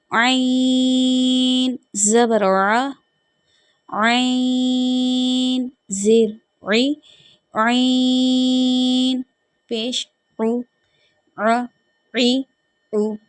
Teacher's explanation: عین کو ادا کرتے وقت ایک تو یہ حلق کے جو درمیان والے حصے ہیں نا وہ ادا ہوگا